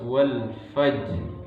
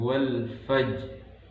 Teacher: memantulkan huruf qalqalah, yaitu jim, dengan suara tidak tertahan atau lepas, wal fajr, dan pantulannya tidak kuat, yaitu ringan, wal fajr. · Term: qalqalah sughra